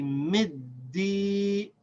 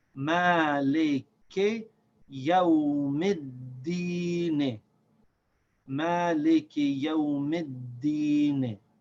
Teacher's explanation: we have to continue the sound of the dal without stopping